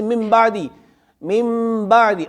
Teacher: اقلاب اس میں نون ساکن کی آواز میم سے بدل جاتی ہے